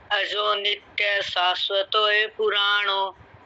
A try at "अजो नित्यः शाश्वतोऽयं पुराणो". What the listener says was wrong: ये नहीं है, यम है, ऊपर बिंदी। शाश्वतम नहीं है, शाश्वतोऽयं। अजो नित्य शाश्वतोऽयं पुराणो,